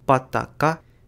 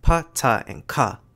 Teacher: Danish’s lenis consonants (<b> <d> <g>) are unvoiced /p/ /t/ /k/, and contrast with aspirated fortis consonants